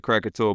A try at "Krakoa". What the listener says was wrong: Krakoa, no T.